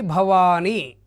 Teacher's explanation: వా దీర్ఘం ఉంది కాబట్టి గురువు అవుతుంది ని లఘువు అవుతుంది భవాని అన్నప్పుడు అది జగనం అవుతుంది.